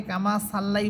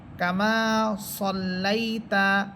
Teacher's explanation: যদি এটা সিন হতো তাহলে সা হতো, কিন্তু যেহেতু এটা সদ, এই জন্য এটাকে মোটা করে পড়বেন এবং আকারের উচ্চারণ ছাড়া পড়বেন। কামা সল্লাইতা, সদ লাম সবর সল, লাম ইয়া সবর লাই, তা সবর তা।